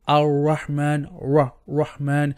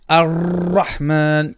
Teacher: there is no beating of the tongue whatsoever. There was no repetition, and that is not the correct sifa for the letter Ra.